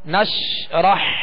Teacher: نش آواز شین کو ادا کرتے ہوئے منہ میں پھیل جائے گی مگر اس میں بھی قلقلہ نہ ہو۔ نشرح حا کو وسط حلق سے واضح ادا کرنا ہے